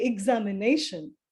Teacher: that word examination is maybe a five uh syllabic word but the nay part of it is stressed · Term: word stress